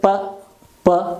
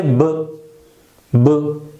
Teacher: there isn't any vibration. It is voiceless consonant.